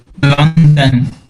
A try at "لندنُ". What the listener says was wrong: With the sukoon on the noon. We don't have sukoon. It has to be one or two dhammas. You choose.